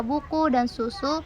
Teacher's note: vokal U kecil atau terbuka seperti pada kata buku dan susu